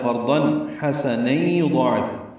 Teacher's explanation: تنوین کے بعد حا آنے کی وجہ سے اظہار ہے ، قرضن حسنا یضاعف، حا وسط حلق سے ادا کریں گے،